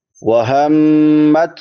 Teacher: میم مشدد ہے، شاد والی میم، اس پہ ہمیشہ غنہ ہوتا ہے